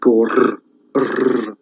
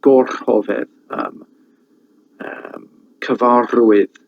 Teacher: They've got like a trilled R, and that's like gor, that sound.